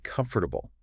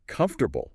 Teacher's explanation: But native speakers almost always it's more like comfortable three syllables. That middle one just disappears.